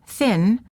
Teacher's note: the tip of the tongue touches the gum ridge just behind the teeth